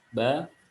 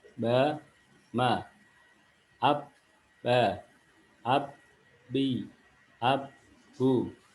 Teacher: bertemunya bibir kita dalam bibir atas dan bawah. Di sana keluar huruf ba.